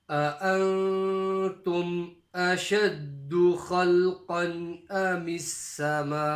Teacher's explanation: the first example in this surah of a big mud, a 5-second stretch